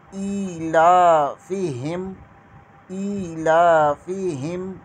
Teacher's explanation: حمزہ کے نیچے کھڑی زیر اور لام کے اوپر کھڑا زبر، دونوں کو 1 الف کے برابر کھینچ کر پڑھیں گے